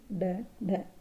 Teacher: मूर्धन्य व्यंजन वही व्यंजन होते हैं जिनके उच्चारण में जीभ मूर्धा से स्पर्श कर लेती है मूर्धा को।